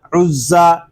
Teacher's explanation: عین زا پیش عز، زا زبر زا، عزا، زا حروف صفیریہ میں سے ہے، اس میں سیٹی کی آواز آئے گی۔ الف اور لام ان کو ہم نہیں پڑھیں گے، عین کو زا کے ساتھ ملا دیں گے